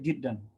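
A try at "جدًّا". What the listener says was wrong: Pak, jiddan itu pakai tasdid.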